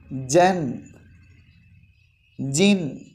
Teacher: ജീം എന്നുള്ള അക്ഷരം പറയേണ്ടത് നാവിൻ്റെ നടുഭാഗം മുകളിലെ അണ്ണാക്കിലെ ആ പൊത്തിലേക്ക് ഉയരണം. ഏകദേശം തട്ടിയ രൂപത്തിലാണ് ജീം പറയേണ്ടത്.